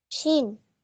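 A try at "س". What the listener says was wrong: এটা শিন না, এটা হচ্ছে সিন।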